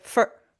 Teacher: You're not pronouncing the or vowel in for fully. You reduce it.